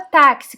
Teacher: olha como que a gente fala um x então sai o som do cá e do esse